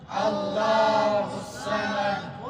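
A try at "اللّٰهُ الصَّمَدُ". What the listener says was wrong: اس نہیں کہنا، سین کی آواز آ جائے گی، سواد ہے، اللہ الصمد اللہ الصمد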